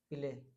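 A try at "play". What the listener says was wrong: जैसे ये प्ले था ना, प्ले में भी वही आप सेम मिस्टेक कर रहे हैं जो ब्रश में कर रहे थे। हम्म, पीले नहीं होना चाहिए, प्ले होना चाहिए। हाँ, जैसे आधा पा, प्ले।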